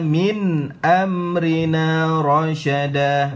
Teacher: Min nun mati dengan jelas disebut kerana bertemu dengan hamzah, hukumnya izhar halqi.